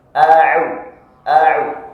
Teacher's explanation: Ain makhrajnya bukan dari hidung. Jadi tidak boleh mengucapkan ain ke hidung.